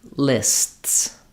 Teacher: You're stopping the air briefly and then going back to that S sound. So you won't hear the t releasing because it's releasing into the S.